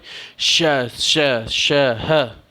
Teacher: स श श ह, ये 4 हैं, ये 4 ऊष्म वर्ण हैं। इनके उच्चारण में जिह्वा मुख के किसी भाग के साथ रगड़ खाती है तथा ऊष्मा गर्मी पैदा होती है · अब देखिए कि अगर हम बोलते समय श श श ह ऐसा इस तरह से बोलते हैं तो हमारा जो मुख है, मुख में रगड़ाहट हो रही है इन वर्णों को बोलने में, तो इसलिए इसको हम ऊष्म, माने कि जब गर्मी टाइप का पैदा हो रहा है तो इसको हम ऊष्म व्यंजन कहते हैं।